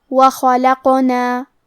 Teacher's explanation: کلمت خلقنا میں حرف الخاء کی ادائیگی حلق کے اوپر والے حصے سے ہے. خاء حروف التفخیم میں سے ہے تو ہم یہ حرف کو موٹی آواز میں پڑھیں گے. حرف القاف کی ادائیگی زبان کے جڑ اور تالو کے نرم حصے سے ہے. · کیونکہ اس پہ جزم ہے تو یہاں قاف کا حکم ہے قلقلہ. قلقلہ کا معنی ہے حرف ساکن کو ہلانا، تو ہم حرف القاف کو ہلاتے ہوئے یہ کلمہ کو پڑھیں گے.